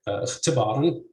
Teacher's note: you'd say اختباراً with stress on the second CV syllable